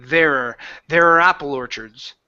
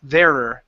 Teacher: strongly okay so instead of saying there are apple orchards there it almost turns into an ER sound there're but you have to bounce and move your mouth to